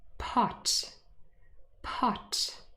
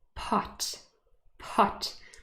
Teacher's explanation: when you put your hand in front of your mouth pot pot i can feel the puff of air coming out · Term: aspirated